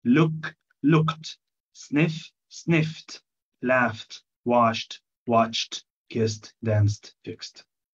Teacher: هنا الإي دي تنطقت تي في الحالات دي. لما تيجي بعد الهيسينج ساوندز.